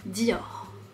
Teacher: Donc Dior, quatre lettres, mais un peu difficile parce que le R, il est à la fin et on le prononce Dior. On le prononce de façon très légère. Le R, il n'est pas vraiment là